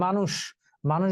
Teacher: মানুষ বানানে মূর্ধন্য স আছে, কিন্তু উচ্চারণে সে তালব্য স হবে। মানুষ তালব্য স এর মতো উচ্চারিত হয়।